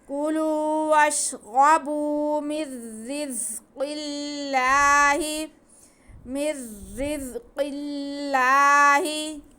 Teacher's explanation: یہاں ہمارے پاس اللہ سے پہلے زیر ہے تو یہ باریک پڑھا جائے گا ، کُلُوا وَاشْرَبُوا مِن رِّزْقِ اللَّهِ، مِن رِّزْقِ اللَّهِ، وَلَا تَعْثَوْا، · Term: جلالت اللہ